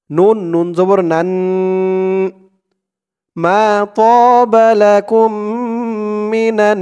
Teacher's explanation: এখানে ওয়াজিব গুন্না হবে, কারণ হরকতের পরে নুনের উপরে তাসদিদ , হরকতের উপরে নুন ও মিম এই দুইটি অক্ষরের উপরে তাসদিদ